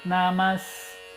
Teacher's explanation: É como se o S alongasse também meio matra do A, a duração.